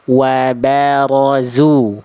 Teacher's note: Ba-nya tipiskan. Tebelnya di ro-nya aja.